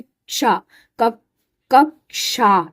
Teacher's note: इसमें क और श मिला इसलिए इसकी साउंड में भी क और श की आवाज आती है